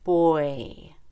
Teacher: Boy ends in long O and then E.